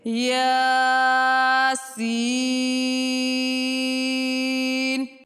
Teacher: یا کو 1 الف کی مقدار اور سین کو 3 الف کی مقدار کھینچ کر ادا کریں گے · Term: مد لازم